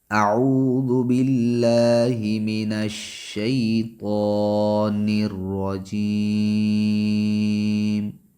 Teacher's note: جیم کے یا، یا مدہ ہے، اور میم پہ ساکن کریں گے تو مد عارض بنے گا، ہم 5 سے 6 حرکات کے برابر اس کو کھینچ سکتے ہیں